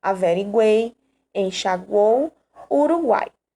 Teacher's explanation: semivogal mais vogal mais semivogal na mesma sílaba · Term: tritongo